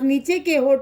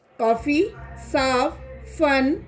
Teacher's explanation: फै बोलते समय ऊपर के दांत नीचे के होंठ को छूते हैं